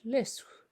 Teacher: You take the tip of your tongue, touch it to the alveolar ridge, and you allow the air to flow around your tongue, kind of around your cheeks and out the front of your mouth, as in the word lis. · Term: whispered L